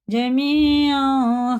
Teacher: یا ساکن سے پہلے زیر ہے تو کھڑے زیر کی طرح کھینچ کے پڑھیں گے